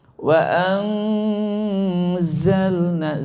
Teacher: Karena nun mari ketemu za, maka bunyinya antara eng dan en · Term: ikhfa